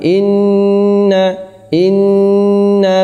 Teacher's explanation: Inna guna musyaddadah dua harokat berdengung